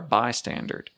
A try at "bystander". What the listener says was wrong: I feel like you're saying bystander. Bystander. I feel like you're saying standard. A bystander.